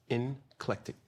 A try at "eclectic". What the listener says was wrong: there's no in it.